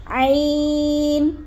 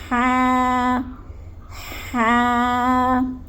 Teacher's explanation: عین اور ہا یہ دونوں حلق کے درمیانی حصے سے ادا ہوتے ہیں